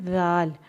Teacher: اب دیکھیں میں نے ذال کو پڑھنے کا طریقہ بتایا تھا کہ ذال کو دانتوں کے درمیان زبان رکھتے ہیں اور ذال کو نرمی سے ادا کرتے ہیں